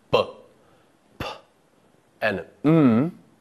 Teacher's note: Sounds which utilize both the top and bottom lips are called bilabial sounds.